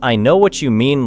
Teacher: For example, the phrase I know what you mean looks simple, but when spoken naturally, it may have rhythm, connection, and emotion. The speaker may stress know and mean.